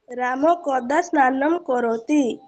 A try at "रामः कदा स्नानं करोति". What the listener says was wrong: रामः विसर्गः अस्ति, तदर्थं किं करणीयं? विसर्गस्य अपि उच्चारणं भवेत् इति।